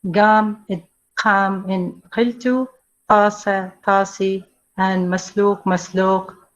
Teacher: Let's see here in vowels, as we see feature pharyngeal moving to the vowels, it becomes retracted or lowered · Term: tafkhim